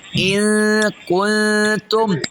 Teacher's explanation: اخفي برضو النون الساكنة مع الغنة حركتين. النون الساكنة جه بعدها حرف الكاف. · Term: إخفاء